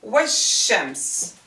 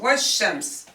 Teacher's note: when it's preceded by a word, we will jump right to the sun letter. We will swallow the definite article.